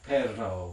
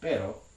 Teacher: a trill that's made by holding the tongue body again somewhere near the alveolar ridge and creating conditions behind it that allow that tongue tip to vibrate